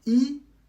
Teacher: Il se prononce exactement comme la voyelle I, mais avec le premier ton.